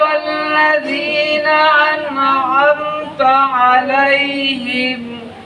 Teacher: সিরাতাল্লাযীনার কাছে শুধু দালটার উচ্চারণটা একটু মাখরাজ থেকে বাইরে চলে গেছে, মানে যেই জায়গা থেকে উচ্চারণ হওয়ার কথা ছিল সেখান থেকে একটু বাইরে চলে গেছে। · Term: দালের উচ্চারণটা